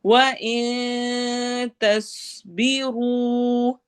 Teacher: स्वाद को हैवी पढ़ना है और रू पे वाव मद्दा